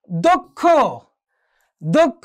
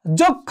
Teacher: প্রথমে হচ্ছে ক অর্থাৎ অল্প প্রাণ উচ্চারণ হবে, পরবর্তী সময় মহাপ্রাণ উচ্চারণ হবে